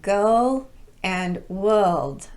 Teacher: That sounds very British because they drop the R in their vocalic R sounds. But if you want to sound American, that sound has to be there. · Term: omitting the R sound